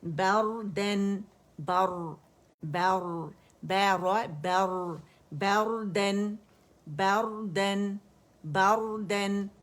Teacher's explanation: یہ را موٹا ہے کیونکہ را سکون سے پہلے ہمارے پاس فتح آ رہی ہے